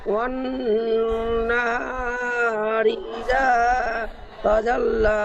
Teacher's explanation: ওয়াইয়ের উপর জাবার আছে, জাবারটি হারাকাতে পড়া তাড়াতাড়ি পড়তে হয়, টান দেওয়া নিষেধ। নুনের উপর তাসদিদ আছে, তাসদিদযুক্ত নুনকে গুণনা করা ওয়াজিব। গুণনা করার পরিমাণ 1 আলিফ পরিমাণ টান দিয়ে পড়তে, নাকে গুণনা করে পড়তে হবে।